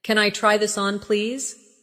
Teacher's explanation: Notice how try this on blends slightly. It makes your speech sound smoother.